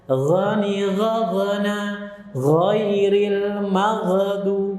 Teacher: Ghughan ghani ghagna minal mughni maghighan ghani gha. Hati-hati, ghain sukun jangan ada pantulan